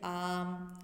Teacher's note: الف مدہ کی آواز دو الف کے برابر ہوتی ہے، اسے لمبا کھینچ کر پڑھا جاتا ہے